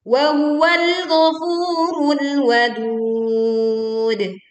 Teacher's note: Ayat ke-14, wahwal, tekan lam sukun, ghafurul, panjangkan fu 2 harokat, rul, tekan lam sukun, wadud. Kita memantulkan dal sukun di ujungnya, yang sebelumnya kita baca panjang 2, 4 atau sampai 6 harokat. Wahwal ghafurul wadud.